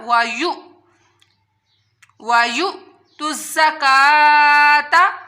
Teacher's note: حمزہ جب ساکن ہوتی ہے تو اس کو جھٹکے کے ساتھ پڑھا جاتا ہے